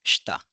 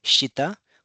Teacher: So this is devoicing of vowels. We do not say it as shita, we call it as shta.